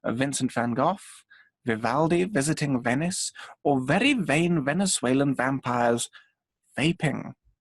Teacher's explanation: You're not pressing a lot of pressure behind your lips, because actually the air can go through the whole time. Your top teeth touch the bottom lip. Like that. So it's like you're biting your lip. · And in that position, you can still breathe out, and you can make the B is quite short, but the V can be as long as you like. It sounds like someone hoovering or vacuuming. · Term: V sound